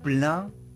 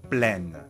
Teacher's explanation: quand il y a une voyelle nasale au masculin, elle est remplacée au féminin par la consonne N.